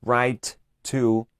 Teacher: sonidos de consonantes o cuando tienes dos sonidos de consonantes similares no tienes que pronunciar la consonante dos veces sino una sola vez alargando un poco este sonido